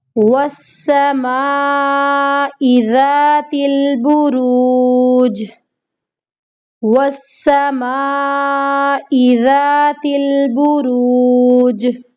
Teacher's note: واو کو سین کے ساتھ مضبوطی کے ساتھ ملانا ہے، سختی کے ساتھ، وس کی آواز ہے۔